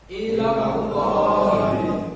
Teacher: bahasa tafkhim, lam jalalah Allah itu dibaca tebal